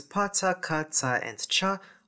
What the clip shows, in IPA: p t k ts tʃ